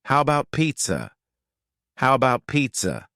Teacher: the first a in the word about is gone it's just missing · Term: reduction